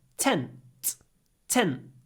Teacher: Because t is unvoiced, глухой, so we get this little pause.